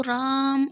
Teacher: जैसे राम, वैसे most normally आप राम बोलोगे, लेकिन अगर प्लुत बनाना है उसको तो राम ऐसे खींच के बोलते हैं, तो वो प्लुत स्वर हो जाता है